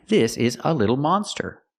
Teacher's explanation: We have to use the open sound, monster. Ah, like hot and stop.